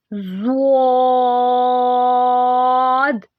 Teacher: یہ حروف موٹا پڑھیں گے، یعنی یہ حروف مستعالیہ میں سے ہے، اس کو یہ موٹا کر کے پڑھیں گے۔